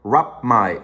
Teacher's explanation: so you pronounce the m but not the p right they are both bilabial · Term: homorganic sounds